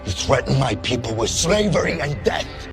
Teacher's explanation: Ele falou death, colocando a língua entre o dente. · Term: som do TH